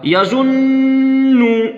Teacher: नून पे तशदीद है, यहीं पे गुन्ना होगा